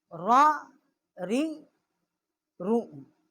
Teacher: را کا جو مخرج ہے وہ بھی نون کے مخرج کے قریب ہے مگر اس میں پشت زبان جو ہے اس کو دخل نہیں ہے